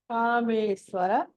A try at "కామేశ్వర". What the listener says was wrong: స్వాకదు శ్వర సాకదు ష. మీరు నాతో విడిగా పలికినప్పుడు షా అంటున్నారు, దీంతో పలికినప్పుడు స. కామేశ్వర కదండి, కామేశ్వర. షా ఇది ష.